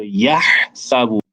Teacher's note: this is a very breathy sound, as though you are breathing out to your hand